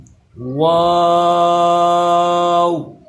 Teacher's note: ہونٹوں کو گول کر کے پڑھیں، واو۔ آخر پہ بھی نرمی کے ساتھ ہونٹوں کو گول کر دینا ہے تو وہ او کی آواز بن جائے گی